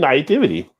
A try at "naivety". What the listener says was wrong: You're adding an extra T in there. Naivety. Naivety. Naivety. Not nativity.